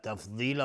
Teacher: تفضیلا ضاد از حروف استعلاء غلیظ تلفظ میشه. تفضیلا مد عوضی از تنوین.